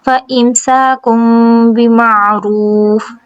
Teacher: تنوین کے بعد با ہے، اقلاب کا قاعدہ ہوگا اور نون کی آواز کو میم میں بدلیں گے